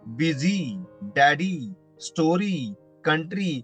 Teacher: प्रत्येक ठिकाणी वाय चा उच्चार इ झालेला आहे आणि इ हा तर स्वर आहे म्हणजेच वॉवेल आहे म्हणजे वाय